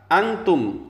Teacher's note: wala Antum lainnya juga Ma Jaiz munfasil Antum itu dibaca ikhfa Karena setelah huruf nun mati ada huruf Ta Maka dibaca berdengung